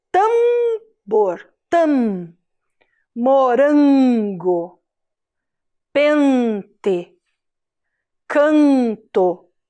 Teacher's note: Então, vogal A, vogal E, vogal O, todas essas vogais mais a letra M ou a letra N vão dar esse som que sai pelo nariz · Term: som nasal